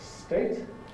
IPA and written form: steɪt (state)